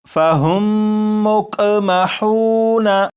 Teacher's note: تو پورے قرآن پاک میں اگر کسی بھی لفظ میں آپ دیکھیں کہ میم ساکن ہو، میم ساکن کے بعد دوسری میم ہو تو وہاں پر غنہ کر کے ہی پڑھیں گے